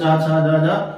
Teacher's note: जो चा वर्ग के अंतर्गत चा वर्ण आते हैं, चा, छा, जा, जा, इनको स्पर्श संघर्षी व्यंजन कहा जाता है।